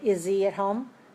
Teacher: i don't pronounce the h i just make the z